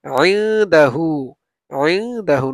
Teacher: নুন সাকিনের পরে দাল আসছে ইখফা, এই জন্য আমরা নুনটাকে গুন্না করে পড়বো